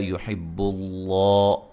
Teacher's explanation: لفظ اللہ کو خوب موٹا کریں گے، اس سے پہلے حرف پر پیش ہے